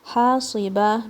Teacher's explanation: don't make the ha heavy, it will come from the center of your throat. Sad is heavy, and ba, don't make it heavy as well.